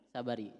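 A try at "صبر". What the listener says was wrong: Sabri, sukun tengahnya.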